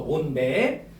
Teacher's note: 뒤에 있는 맵 할 때 미음의 영향을 받아서 비음화가 적용된 거죠.